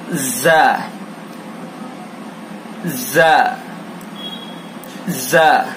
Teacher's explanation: ज़ा के अंदर सख्ती होगी और सीटी की आवाज निकालेंगे। ज़ ज़ ज़। जबान की नोक सना सुफला का किनारा और कुछ इत्तिसाल सना उलिया से, यानी जबान की नोक को सना सुफला के किनारे पर लगाएंगे और थोड़ा सा सना उलिया से भी उसको टच करेंगे, फिर ज़्यादा करेंगे।